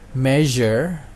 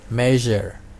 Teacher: ada kemiripan dengan huruf z, bunyi z, tapi j di sini ada getaran ya